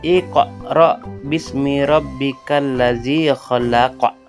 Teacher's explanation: maharaj huruf qaf adalah pangkal lidah bagian dalam